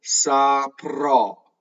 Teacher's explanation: I'm exaggerating the O. It is open.